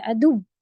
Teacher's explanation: تو دو واو ہیں، اس لیے آواز کو آپ کس طرح سے عدو اس طرح سے باؤنس کریں گی اور نبر بھی کریں گی، یعنی اونچا تھوڑا سا دکھائیں گے